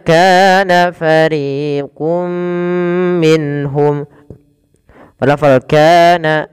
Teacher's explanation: kaana ada panjangkan dua harakat karena dia Mad thaii kemudian RI juga sama dua harakat jangan dibedakan antara Ka dan